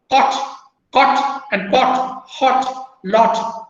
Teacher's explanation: these words are made up of back vowel sounds, op sound. Right.